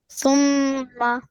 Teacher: When meme has shadda on it, similar to noon, then we apply gunna there.